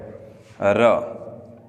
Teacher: जीभ जब कंपन करती है तब र का उच्चारण होता है · प्रकंपित, जिसमें जीभ ऊपर कठोर तालु के टकराने के बाद जब झटके से नीचे आती है तो उसमें क्या है, 2-3 बार कंपन होता है। तो ऐसा व्यंजन है वो है र।